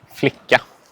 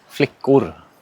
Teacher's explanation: you notice there's two very distinct vowels in the second syllable there that ah versus the ooh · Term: unstressed vowels